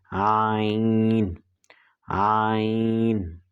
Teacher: گلے کے درمیانی حصے سے ادا ہوگا